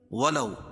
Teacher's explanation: واو ساکن سے پہلے زبر ہو تو واو لین اس کو نرم آواز کے ساتھ جلدی ادا کریں گے